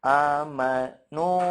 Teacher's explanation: yang mad itu kan yang dipanjangkannya adalah vokalnya, bunyi u-nya, bukan gunahnya. Jadi kurang tepat ketika baca kita gunahnya terus-terusan.